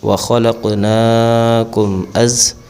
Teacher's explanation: میم ساکن کے بعد حمزہ آ گئی، یہاں پر بھی اظہار شفوی ہوگا، یعنی غنہ نہیں کریں گے